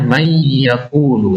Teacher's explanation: May yaakulu masih ada bunyi n